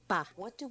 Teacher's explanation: Usamos os lábios de um jeito específico. Juntamos e depois explodimos num sopro de ar.